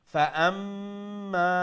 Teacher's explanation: মিম মুশাদ্দাদ গুন্না করতা আর মা এক আলিফ লম্বা করতা